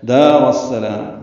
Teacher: دال کو 2 حرکات لمبا کرنا ہے ، را کو السلام کی سین سے ملا دینا ہے، وقف